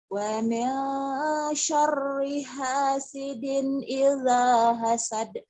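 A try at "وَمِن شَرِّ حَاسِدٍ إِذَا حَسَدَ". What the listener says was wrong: Bagus, cuman kedengarannya kayak minsor ya. Kayak nyosor, wa min sor, jangan wa min sor, wa min syar. Jangan bunyi o ya. Kedengarannya kayak wa min sor, jangan wa min sor. Wa min syar.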